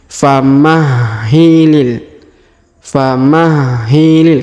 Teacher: rubah ya menjadi fathah seperti yang sebelumnya kemudian kita lanjut famahilil huruf Hi di sini kita tasdidkan atau kita tekan dan tahan